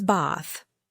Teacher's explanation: In American English, I'd say bath, like bath with a short a sound. In British English, it was bath with a long a, like the sound you make at the doctor's office.